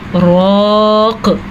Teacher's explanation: रॉ को हमने पुर पढ़ा, क़ाफ़ पे हमने कलकला किया क्योंकि वक्फ़ की हालत में क़ाफ़ पे साकिन आ गया। कलकला कैसे अदा होता है, रॉक़, ये कलकला है।